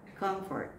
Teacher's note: This accent is on the first syllable.